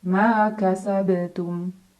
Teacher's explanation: Ma kasab ada qalqalah sughra karena ada huruf qalqalah yaitu ba yang sukunnya sukun asli dan berada di tengah-tengah bacaan. Maka cara bacanya dipantulkan dengan pantulan yang kecil.